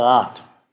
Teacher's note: Das Problem heißt nämlich Auslautverhärtung. Im Deutschen wird der Auslaut verhärtet oder stimmlos. Man spricht da von Desonorisierung.